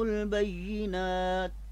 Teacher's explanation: اب یہاں پہ علامت وقف کوئی نہیں ہے، لہٰذا میں نے بینات کے لفظ پر میں نے وقف کیا ہے، یعنی کہ میرا وقف سانس جو ہے وہ مکمل ہو گیا تھا، اس لیے لفظ بینات کی جو تا ہے آخری حرف اس پر پیش ہے، مگر وقف کرنے کی صورت میں نے پیش کو ساکن یعنی جزم میں بدل دیا